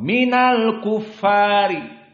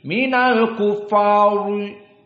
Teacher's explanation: Ra idza kasura maka muraqqaqah